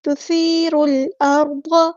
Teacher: سا کو نرمی سے پڑھنا ہے، اس میں سیٹی نہیں لانی، تو سی نہیں کرنا، تثیر الارض۔